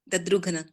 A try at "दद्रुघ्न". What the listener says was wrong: आप घ को पूरा जोर दे रहे हैं, ऐसे बोलिए दद्रुघ्न, आधा घ होना चाहिए।